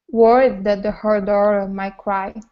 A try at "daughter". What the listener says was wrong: Okay, so here on daughter, you want to pronounce a flap T, saying da-der, nice and hard against the top of your mouth. Instead of dar, it's dod, daughter. Okay, so we don't need to say daughter. It's not an ow sound, it's only an ah. Da.